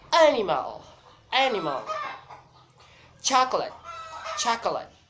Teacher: just the first syllable is the primary stress then the second and the third syllable is unstressed